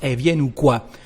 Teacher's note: when we speak, Elle becomes E everywhere, even if we've got a consonant afterwards